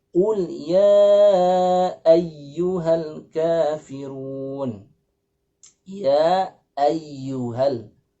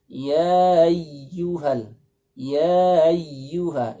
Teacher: huruf hamzah nya dijelaskan ya Sehingga terpisah antara Alif yang melekat pada huruf ia dengan Hamzah